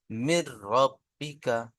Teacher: তাই নুন সাকিনকে র এর সাথে মিলিয়ে বিনা গন্নায় জাহির করে, বিনা গন্নায় জাহির করে পড়তে হয়, একে ইদগামে তাম বলে। রয়ের উপরে তাসদিদ আছে, তাসদিদ আলা হরফ 2 বার পড়তে হয়, একবার ডান দিকের হরফের সাথে মিলিয়ে, একবার নিজে নিজে। · রয়ের উপরে তাসদিদ আছে, তাসদিদ আলা হরফ 2 বার পড়তে হয়, একবার ডান দিকের হরফের সাথে মিলিয়ে, একবার নিজে নিজে। রয়ের উপরে জবর আছে, রকে পুর করে পড়তে হয়। বায়ের নিচে জের আছে, জেরটি হলো হারাকাত, হারাকাতকে টান না দিয়ে তাড়াতাড়ি পড়তে হয়।